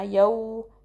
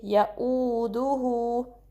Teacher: इस तरीके से हमज़ा की सेपरेट साउंड होगी deep part of द throat से, हलक के गहरे हिस्से से , यऊदुहु, हु को 2 काउंट स्ट्रेच करेंगे और होंठों को